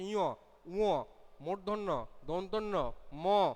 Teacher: সব উচ্চারণ করতে গেলে দেখো আমাদের শ্বাসবায়ু নাকের সাহায্যে বা নাকের ব্যবহার করতে হচ্ছে, আমাদের শ্বাসবায়ু নাক দিয়েও কিছুটা বের হচ্ছে। এই জন্য এই কটার নাম হচ্ছে নাসিক্য বর্ণ।